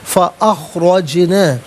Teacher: جیم ساکن ہے لیکن حرف قلقلہ ہے تو آواز لوٹتی بھی محسوس ہوگی